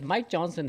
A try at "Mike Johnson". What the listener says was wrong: It sounded like you said my Johnson. Mike. You gotta get the K in there. My Johnson